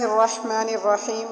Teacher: الرحمن کا جو را ہے، اس را کو ہم پر یعنی موٹا پڑھیں گے